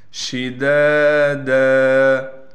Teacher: شین کی آواز کو صاف کر کے نکالیں گے، دال کے بعد الف ہونے کی وجہ سے دال کو ایک الف کی مقدار کھینچیں گے، اور اس دال پر 2 زبر ہونے کی وجہ سے جب اس پر وقف کیا جائے گا پھر دال کو ایک زبر دے کر دال کو ایک الف کی مقدار کھینچیں گے۔